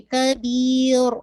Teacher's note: را کو آپ نے جب اسٹاپ کریں گے تو لائٹ رکھے. کبیر ایسے نہیں، را کو آپ نے ہیوی نہیں کرنا.